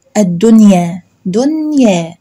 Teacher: النون بتظهر عادي بتلقائية بطبيعتها، لا بتغنى ولا بعمل أي حاجة من الحاجات التانية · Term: إظهار مطلق